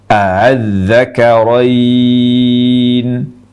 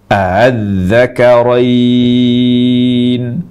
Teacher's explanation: A yang pertama dibaca jelas, lalu yang keduanya dibaca tashil antara hamzah jelas dengan alif.